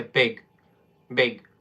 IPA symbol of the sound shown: ɪ